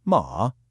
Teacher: That super easy M initial, combined with that dipping and rising third tone we just practiced.